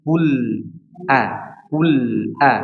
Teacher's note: Kul lamnya diperhatikan, lamnya juga diberikan sedikit aliran suaranya. Jangan langsung kul a, tapi kul a, kul a.